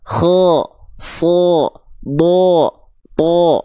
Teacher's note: Tapi kenapa kalau huruf tebal, vokalnya jadi dari vokal A berubah jadi vokal O? Karena jalurnya terhalangi oleh pangkal lidah yang naik.